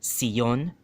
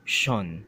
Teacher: The CION endings, the Sion endings, a lot of Chabacano speakers have that tendency to make it from a Sion into a Shon, right? It's two syllables.